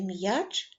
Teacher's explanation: Отже в слові м'яч перший звук вимовляється твердо а буква я позначає два звуки